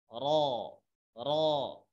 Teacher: Lidah ujung digetarkan, R ditakrirkan namanya, ya digetarkan R, kemudian pangkal lidahnya itu dinaikkan. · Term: Huruf ro